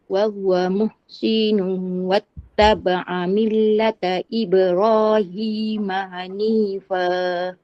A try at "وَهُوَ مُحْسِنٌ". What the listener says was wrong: sikit lagi wahwa muhsi pendek wahwa muhsinu wattaba'a millata huruf ha tu muhsinu